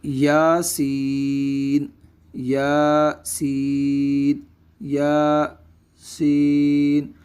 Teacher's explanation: یا کو ایک الف کی مقدار لمبا کیا جائے گا، جبکہ سین کو مد لازم کی مقدار یعنی 2 یا 2.5 الف کے برابر اس کو بھی لمبا کیا جائے گا۔